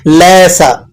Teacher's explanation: سین کو آپ نے باریک سیٹی کے ساتھ ادا کرنا ہے